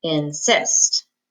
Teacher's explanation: second syllable has the accent because we don't say incest we say insist